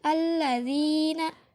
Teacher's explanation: karena kasrah bertemu dengan ya sukun, jadi dipanjangkan dengan 2 harokat. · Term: mad asli